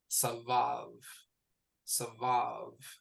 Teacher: So 2 syllables. The stress goes on the final syllable.